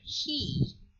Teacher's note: But if we want to produce the word he, you can see here that the front of the tongue is raised high